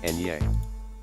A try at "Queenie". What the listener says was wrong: Not enye. It's ni. It's Queenie.